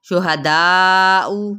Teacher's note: شہداء دا کو 4 حرکت لمبا کریں گے